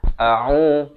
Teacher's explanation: huruf hamzahnya itu makhrajnya di pangkal kerongkong, ain di pertengahan kerongkong. A'u, jangan baca a'u jadi huruf hamzah kedua-dua, ataupun a'u jadi huruf ain kedua-dua.